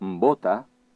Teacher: En pronunciar el so inicial de la paraula bota, es produeix un contacte entre els dos llavis.